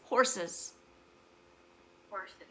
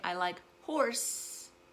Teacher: you have to add the extra little is at the end for the plural of horse to sound like horses